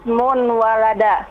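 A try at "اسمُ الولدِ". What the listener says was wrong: Ismul walada. Bukan ismun, tapi ismul. Tetap alif lam tetap. Ismul. Ismul walada.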